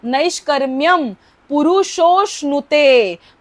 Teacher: रफारातला जो अनुस्वार आहे त्याच्यापुढे प आहे म्हणून त्याचा उच्चार म असा होतो